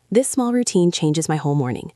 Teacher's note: We can link whole and morning just a little bit.